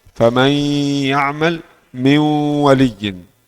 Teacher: Nun yang masuk dalam ya, nun masuk dalam wau. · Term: idgham naqis